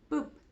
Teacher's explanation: Bueno, según el punto de articulación, o sea, la posición de los órganos de la boca, podemos clasificar las órdenes en labial, que ocurre cuando presionamos los labios uno junto a otro